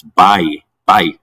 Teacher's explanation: like a gliding sound so for example we have a strong vowel this a and a weak follow this i and they can go together in a gliding sound